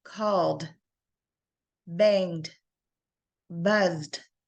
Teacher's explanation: So when we have any of these letters in our word, and if you look across all the way from B, D, G, all the way to NG at the end, you will feel that vibration at the end. So you will have the da sound at the end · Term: voice consonant